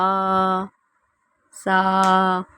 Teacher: سا میں سیٹی نہیں آئے گی